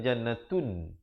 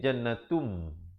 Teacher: Natum juga di situ idgham bi gunnah, tanwin bertemu mim. Asalnya jannatun, tapi bila datang mim jadi jannatum. Beza tun dengan tum.